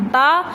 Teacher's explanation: دونوں ہونٹ ہم ملا کے بولتے ہیں با تو ہمارے ہونٹ گیلے ہو جاتے ہیں یعنی کہ ہونٹوں کے گیلے حصے سے با ادا ہوتا ہے۔